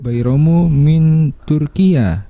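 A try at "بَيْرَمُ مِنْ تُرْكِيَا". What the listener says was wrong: Enggak perlu pakai ikhfa lagi, min ya. Jangan pakai 2 harokat lagi, min Turkiya.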